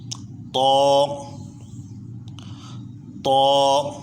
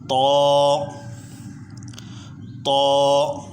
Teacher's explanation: اس کو طوا نہیں پڑھیں گے، اس کو موٹا پڑھیں گے لیکن اس میں واو کی آواز نہیں آنی چاہیے۔